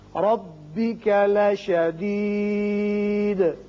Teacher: یہ را پر پڑھیں گے اس لیے کہ اوپر فتحہ یعنی زبر ہے